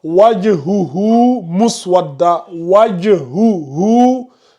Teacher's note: On a deux hu qui sont collés. Le premier hu n'est pas allongé, le deuxième il est allongé.